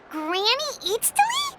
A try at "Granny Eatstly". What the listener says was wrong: Yes, Granny Eatstly. But emphasis on Eatstly, not Granny.